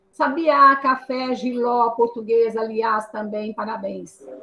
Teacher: as oxítonas, olha aqui, tem o acento mais forte na última sílaba